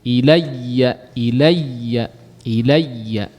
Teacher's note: Ilayya di sini bertasydid, huruf ya bertasydid ya. Jangan cuman pengucapan ya-nya saja secara ringan.